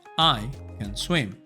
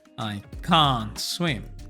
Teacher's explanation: En el positivo, I can swim, ocupamos la versión débil de can, que se pronuncia con schwa, can. Entonces va a sonar más corto y suave.